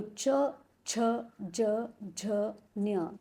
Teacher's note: तो हमारी जीभ जो है तालु को स्पर्श करती है, इसलिए इसका उच्चारण स्थान है तालव्य।